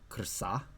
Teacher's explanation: this R in PIE already is a syllabic R, so this is actually like acting kind of like a vowel here.